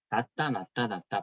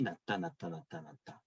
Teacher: 자음과 자음이 만나는 요 위치에서 히읗과 디귿이 합쳐진 소리, 축약이 일어났죠.